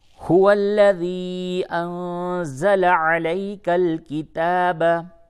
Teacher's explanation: انزل نون ساکن کے بعد زا ہے، اخفا ہوگا